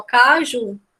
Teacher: a sílaba tônica é o ju é uma oxítona